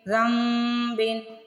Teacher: آپ نے یہاں پہ نون کی آواز کو نہیں پڑھنا، رال کو ڈائریکٹ میم کی آواز میں بدلنا ہے